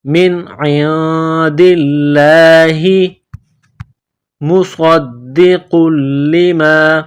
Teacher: کتاب من عند اللہ، من عند اللہ، عین کو نون کے ساتھ ملانا ہے، نون ساکن کے بعد دال ہے، حروف اخفا ہے تو نون ساکن پر غنہ کریں گے، دال کو لام کے ساتھ ملائیں گے، لام کو دبانا ہے، سختی کرنی ہے، لفظ اللہ کے نام سے پہلے زیر ہے تو لفظ اللہ کے نام کو باریک کرنا ہے